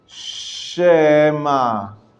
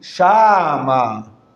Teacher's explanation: it's not a full vowel so it's just uh it's a minimal vowelization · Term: shiva na